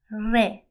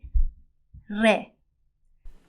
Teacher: we do not pronounce re rolling our tongue in Farsi, but instead the tip of the tongue strikes the front part of the roof of our mouth